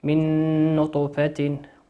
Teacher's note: النون في قوله نطفة هي نون مشددة يحتاج أن تقف عليها مقدار حركتين